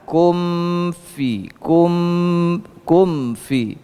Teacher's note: mim itu bukan huruf Qalqalah jadi jangan ada pantulan sedikit pun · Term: mim sukun